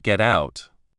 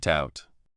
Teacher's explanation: When spoken normally, it can sound a lot like gout. The t at the end of get often blends into the o sound of out. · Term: linking